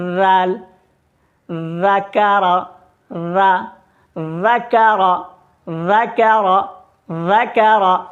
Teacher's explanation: زبان کا کنارہ اوپر والے سامنے کے دونوں دانتوں سے لگانا ہے اور باریک آواز میں پڑھنا ہے